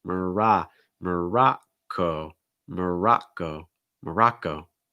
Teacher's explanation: you're starting off with the schwa [Music] and then you're immediately going to an ah sound so open mouth wide back your tongue down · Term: schwa sound